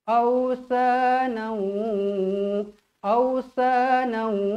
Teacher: Kita bawa daripada tanwin ni bawa ke dalam huruf waw. Sebab itulah kita kena baca awsanau. Awsanau. Pastikan kita punya mulut muncung. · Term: idgham ma'al gunnah